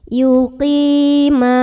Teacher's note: Qi di sini ada mad tabi'i karena ada ya sukun sebelumnya kasrah. Cara bacanya panjang qafnya 2 harokat.